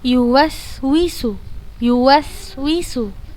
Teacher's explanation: tajamnya suara karena ia keluar dari celah yang sempit antara ujung lidah dengan ujung dua gigi seri atas dan bawah